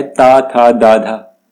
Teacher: दंत्य व्यंजन है। यानी कि जब आप बोलते हैं तो आपकी जो जीभ है वो आपके दांतों को टच करती है